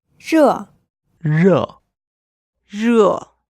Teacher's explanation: So in order to pronounce a good Mandarin R, you curl the tip of your tongue and then you add a slight friction. It's the curling of the tongue which gives it this distinctive sound. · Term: R sound